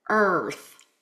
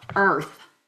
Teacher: So not using the retroflex R, but using a bunched R, I can get my tongue forward a lot quicker for earth